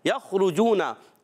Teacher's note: खा उर्फ़ मुस्तालिया में से है, हलक के ऊपर वाले हिस्से से अदा होता है, हुर्फ़ हल्किया में से भी है।